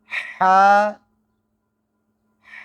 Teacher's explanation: ہا کا جو مخرج ہے وہ ہے حلق، اور یہ حلق کے درمیان میں سے اس کی آواز آتی ہے